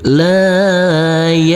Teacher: huruf lam kita baca panjang dengan panjang dua harakat